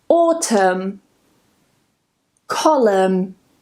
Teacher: we just remove the N and we just pronounce the M